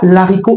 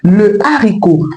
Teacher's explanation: On ne dit pas l'haricot, on dit le haricot parce que la consonne H devant ce mot est aspirée. Donc elle est bien présente dans la prononciation de ce mot.